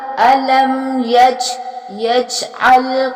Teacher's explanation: جیم جو ہے یہاں پہ قلقلہ کیا جائے گا